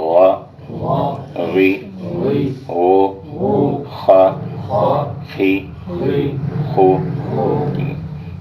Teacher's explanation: ان کو ہم نے حلق کے اوپر کے حصے سے ادا کرنا ہے، غین اور خے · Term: حروف حلقی